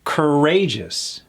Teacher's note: Courageous. Emphasis on that second syllable.